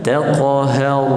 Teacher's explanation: Okey, taq 1, taq, kemudian ha nipis, masuk ke ra mati tebal